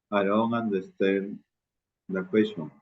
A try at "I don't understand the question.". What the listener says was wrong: Ya, no hagas una pausa demasiado grande en el understand. I don't understand the question. I don't understand the question.